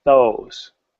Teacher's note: Now those starts with my mouth wide and quickly going to the pucker, right?